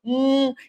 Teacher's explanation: uma obstrução Total aliás da passagem do Ar ao unir esses dois lábios e fazer o som do hum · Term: consoante m